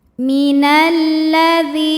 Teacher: Karena jika ada lam tasydid, sebetulnya lam ini terdiri dari 2 lam, lam sukun dan lam fathah, maka huruf syamsiyahnya lam. Cara bacanya dimasukkan. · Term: alif lam syamsiyah